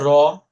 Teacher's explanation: কম্পনজাত ধ্বনি খেয়াল করেন, আপনি বলেন তো র, আপনি যখন র বলছেন তখন দেখেন আপনার জিহ্বা হালকা ভাইব্রেট হচ্ছে